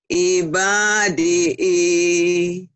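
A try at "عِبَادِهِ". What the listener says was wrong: Bukan i, tapi hi. Lagi.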